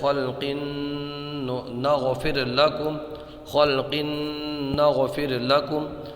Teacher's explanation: تو تنوین کے بعد میں نون آیا ہے، یہاں پر ادغام ہوگا، گنہ کر کے پڑھیں گے